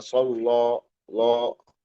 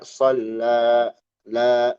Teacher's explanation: A a-nya jelas enggak jadi o itu maksud tipis